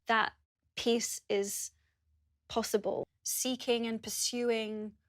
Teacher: the /iː/ sound in these words sounds short is because it's followed by unvoiced consonants